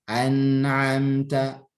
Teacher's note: Namun di sini naqisah, kurang saat izhar. Saat izhar itu bunyi gunnahnya naqisah ya. Tidak terlalu jelas ya.